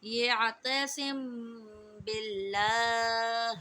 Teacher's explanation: اللہ فعل کے لام کو ہم باریک پڑھیں گے کیونکہ اللہ فعل کے لام سے پہلے زیر ہے